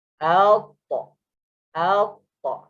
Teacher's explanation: Hujung lidah menekan ke gusi gigi atas.